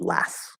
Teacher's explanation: it's kind of hard to stop a T after an S, and so 9 times out of 10, we'll just drop the T completely.